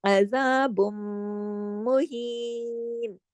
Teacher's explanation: عذاب کو عین کو گلے سے پڑھیے، عذاب، آواز کو ناک میں چھپائیے دیر تک، اکمل غنہ کیجیے، اور پھر مہین، ہی کو ہا یا زیر ہی کی دو حرکات کھینچ کر آیت کو کمپلیٹ کیجیے.